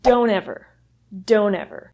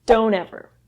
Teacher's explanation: speakers would reduce this to don't ever don't ever so the that T sound at the end of the word don't sort of disappears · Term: reduction